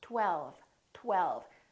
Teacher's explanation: First, there was a tongue, t, t, t, touching behind my upper teeth. And then we round our lips for the W, tw, tw. And then the tongue goes up again for the L, l, l.